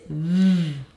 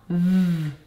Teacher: my teeth are on my bottom lip. My voice box is on. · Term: v sound